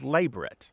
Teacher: The more strict and traditional pronunciation is labret, with the stress on the first syllable, not the last, and not a Frenchy pronunciation, because it is not a French word.